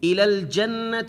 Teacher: الی الجنت، یہاں بھی نون مشدد ہے، نون مشدد کے اوپر غنہ ہوگا، ساری آواز ناک سے نکالیں گے